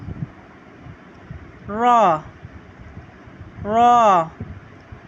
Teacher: زبان کا کنارہ پشت سمیت دانتوں کی جڑ سے ادا ہوتا ہے